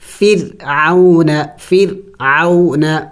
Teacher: اگر را کے اوپر سکون ہے اس سے پہلے زیر آ جائے تو تب را کو باریک کر کے پڑھنا ہوگا